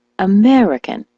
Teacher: the word American, as you know, is stressed on the me